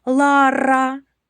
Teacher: Твердий приголосний р перед буквою А.